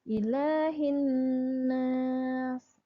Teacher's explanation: Ayat ketiganya adalah ilah. Lanya itu panjang ya, 2 harokat